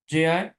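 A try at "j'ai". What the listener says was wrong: নট যাই, ভে বলেছিলেন, কারণ এ এবং আই এই দুইটা মিলে হয় এ, জাস্ট এ উচ্চারণ হবে, হ্যাঁ, এতে এ কার, তাহলে এখানে কি হবে, যে, ঠিক আছে,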